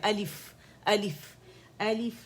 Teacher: حمزہ اقصى الحلق سے ادا ہوگا جو الف کے ہجوں میں آ رہا ہے